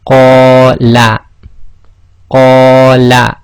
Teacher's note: So that's 2 long on the qa, and la is 1 long.